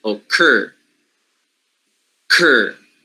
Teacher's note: It is a stressed syllable that k will be aspirated.